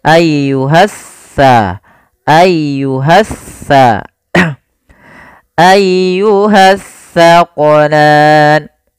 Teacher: Alif lam yang dia tertulis tapi tidak dibaca lamnya sehingga langsung diidgamkan ke huruf setelahnya. Jadi seakan-akan huruf sin ya, maaf huruf tsa, huruf sa ini double tsanya dua. · Yang mana kalau tsa ujung lidah kita wajib menempel dengan gigi seri depan. Sedangkan sin dia di tengah-tengah lidah. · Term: alif lam syamsiyah